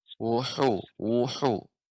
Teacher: Hu di sini tetap dijaga ketipisannya, ya, dia di bagian tengah tenggorokan, ya.